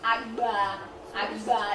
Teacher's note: It's the double articulated one, the voiced, labial velar plosive. Yeah, so the voicing was right, the plosive was right, yes.